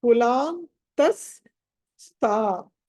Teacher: సో త ఎండ్ చేసినప్పుడు విసర్గ పలక కుండా విసర్గ స్థానంలో స పలకాలి